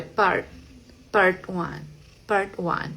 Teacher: al final de las palabras en inglés, esa t va a sonar muy muy suave, eh, prácticamente no suena. Es así que es como totalmente detenida, como cat.